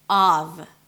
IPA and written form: ɑːv (of)